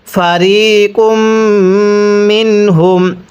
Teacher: নুন সাকিনের পরে যদি এরকম হা ইজহারে হরফ থাকে তাহলে নুন সাকিনটিকে স্পষ্ট করে পড়তে হবে। ফারিকুম মিনহুম, এরপরে ওয়াও জবর ওয়া, হা মিম পেশ হুম, এই হাটি সেকেন্ড মিমের সাথে লাগবে, প্রথম মিমের সাথে লাগবে না।